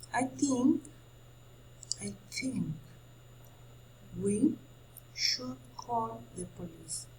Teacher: A can disappear in the first syllable of police.